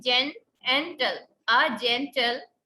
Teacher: तो एक स्ट्रेस्ड और एक अनस्ट्रेस्ड. स्ट्रेस्ड जिसको खींच लिया जाए, जैन थोड़ी बड़ी आवाज है, टल छोटी है.